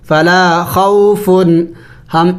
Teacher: اخفا نہیں کرنا اس کے بعد آگے حروف حلقی ہے